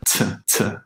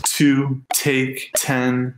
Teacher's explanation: This is an aspirated initial T sound that often comes out like kind of like a T and an S pushed together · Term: tennis T